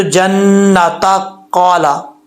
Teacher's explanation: ملا کے پڑھیں گے تو تا کے اوپر زبر پڑا جائے گا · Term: گول تا